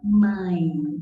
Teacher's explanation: igual em mãe, que primeiro veio a vogal A, depois veio a semivogal I, representada pela letra E, certo? Então, mãe, vai caindo o som, vai diminuindo. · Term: ditongo decrescente